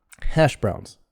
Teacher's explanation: so hash has more stress than browns. Hash browns, and voiced, the S becomes voiced on browns also.